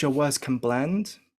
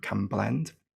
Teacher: It actually sounds like an M, can blend.